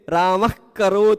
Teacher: विसर्ग बोलते समय जीभ के जड़ पर हवा का प्रेशर पड़ता है। इस कारण ये सब जीहवा मूली है।